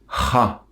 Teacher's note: Il y a la lettre cha, qui est prononcée du fond de la gorge en expulsant beaucoup d'air et rapidement. C'est comme si on essayait de dire ra, mais en expulsant beaucoup d'air du fond de la gorge.